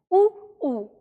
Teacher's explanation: ऊ का उच्चारण स्थान होता है होठों से, यानी जब हम ऊ का उच्चारण तभी कर पाते हैं जब हम अपने होठों से हवा को रोकते हैं, ठीक है, ऊ, और इसमें हम होठों का प्रयोग करते हैं।